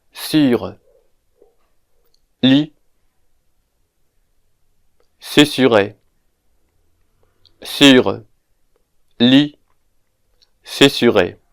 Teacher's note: This vowel sound might be very difficult because it is very evident that this vowel sound does not exist in English. To pronounce this vowel sound, we can start by pronouncing the E sound in a word like flee, and then we round the lips. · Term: rounded version of I